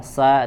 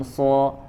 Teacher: Misalkan tadi huruf sin dan sod, ya sa dan so makhrajnya sama, yaitu ujung lidah ditempelkan ke pangkal gigi seri bagian bawah